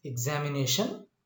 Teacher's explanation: examination is a word which has the primary stress on the fourth syllable and the secondary stress on the second syllable. Remember, examination is a polysyllabic word or long syllabic word, and this one has two stresses, primary stress and secondary stress.